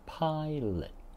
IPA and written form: ˈpaɪ.lət (Pilot)